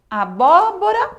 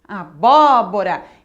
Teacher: Então, já sei que o acento é no bó.